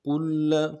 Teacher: ابصارهم، اگلے لفظ جو ہے کلما، کلما، کل میں لام کے اوپر تشدید ہے، زور دیں گے